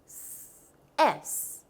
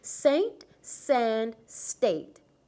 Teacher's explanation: this is an unvoiced consonant it means there is no vibration here to make this sound put your tongue behind your teeth then push air through the teeth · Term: consonant s